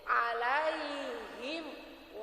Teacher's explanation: Ada mim mati depannya wau ya Bu ya Jadi makhorijul huruf mim dengan wau itu berdekatan makanya harus dibacanya lebih jelas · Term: izhar